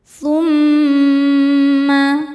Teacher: Tahan dengungannya kurang lebih dua harakat · Mim tasydid dihukumi gunnah musyaddadah karena mim ada tasydidnya. Cara bacanya berdengung, tahan dengungannya kurang lebih 2 harokat. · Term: ghunah musyaddadah